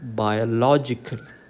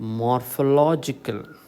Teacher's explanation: in words ending with LOGICAL അല്ലെങ്കിൽ ഇങ്ങനെയുള്ള adjective forms ഉള്ള വാക്കുകളിലെല്ലാം the stress falls on the third last syllable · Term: third syllable from the last